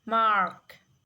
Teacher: The R in this word is not pronounced at all in the conventional pronunciation that is reflected in the usual British transcription.